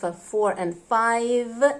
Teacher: We bite our lips on f, 4 and 5 and pronounce the v very clearly at the end.